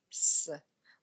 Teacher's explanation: moya o tšwa ka bosesane mo gare ga meno